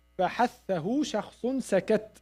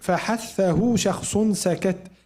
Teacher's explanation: put your hand, you find some air. This is called hams, and that comes with فحثه شخص سكت.